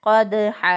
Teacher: قاف کو موٹا ادا کریں گے. اگر قاف موٹا پڑھنے کی بجائے اس کو پڑھ دیتا ہے کوئی کاف تو بھی غلط ہو جائے گا · اس کو اگر کوئی پڑھ دے قدحا تو غلط ہو جائے گا. دال پر قلقلہ ہے، اگر کوئی قلقلہ کا بغیر اس کو ادا کرے تو غلط ہوگا. درست ادائیگی ہے قدحا.